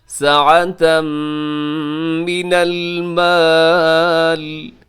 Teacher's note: وَلَمْ يُؤْتَ سَعَةً، یہاں ساعتن پہ تنوین ہے، تنوین کے بعد میم ہے تو یہاں پہ ہوگا ادغام اور غنے کے ساتھ